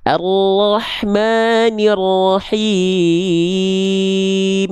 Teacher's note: Ketika M itu pasti ada dengung cuman enggak perlu ditahan.